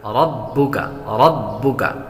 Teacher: با حروف قلقلہ میں سے ہے اور جب حروف قلقلہ مشدد ہوں تو انہیں جمع کے ساتھ ادا کرتے ہیں